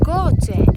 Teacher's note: la palabra coche tiene dos sílabas, coche, y la sílaba tónica es co, porque decimos coche, no decimos coche.